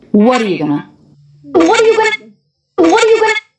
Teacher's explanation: these words are all lower in Pitch they're just coming down from the what leading up to the Dew